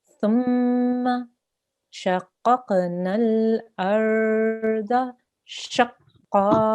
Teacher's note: make sure we join the sheen to the qaf. Shaqqa, and push down and make it hard. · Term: shadda